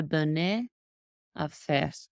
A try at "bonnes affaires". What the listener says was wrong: Et donc ici, il n'y a pas d'accent ici, donc c'est pas et, c'est silencieux.